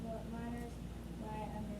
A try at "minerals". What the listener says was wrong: Not what miners. Go slow.